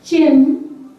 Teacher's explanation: we have ch sound combination of T and something like sh